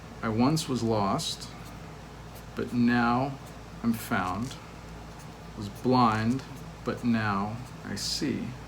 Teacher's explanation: each one is a slack followed by a stressed syllable and that repeats on and on to all four lines